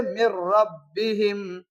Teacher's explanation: ادغام تو ہوگا لیکن غنے کے ساتھ نہیں ہوگا، بغیر غنے کا ہوگا